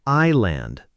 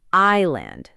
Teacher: Island is spelled I-S-L-A-N-D, but the S is completely silent. We simply say island, like the words I and land put together.